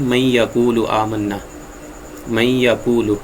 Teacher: نون ساکن کو یا تنوین کو پھر مدغم کریں گے، ملا کے پڑھیں گے اسے، اور جب ملائیں گے تو اس پر شد آئے گی · اب اس کو من یقول نہیں پڑھیں گے ہم، بلکہ اس کو ادائیگی جو ہوگی وہ ہوگی من یقول آمنا، من یقول۔ تو نون ساکن کو ہم نے یا کے ساتھ ملا دیا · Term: ادغام